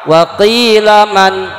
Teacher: saktah berhenti sebentar dengan menahan nafas kira-kira 2 harokat